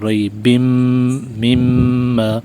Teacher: ناک میں آواز لے جا کر ایک الف کے برابر کھینچیں گے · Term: غنہ